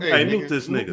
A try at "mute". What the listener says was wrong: When you learn how to speak, he'll mute me, not moot me. Hey, man, moot this nigga. No, it's mute. M-U-T-E. You didn't say that. You said moot.